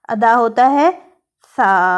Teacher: اوپر والے سامنے کے دو دانتوں کے کنارے سے جب لگتا ہے تو ادا ہوتا ہے سا